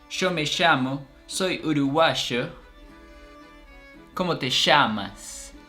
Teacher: they also changed the double L's and the Y's for sha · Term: sh sound